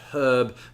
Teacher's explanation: A lot of Americans have a tendency to drop the H on herb whereas the British tend to keep it